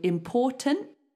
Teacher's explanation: you put your tongue in the position of making a t my tongue is there it's ready to do the T but it doesn't release · Try to make the sound important, but don't release the T.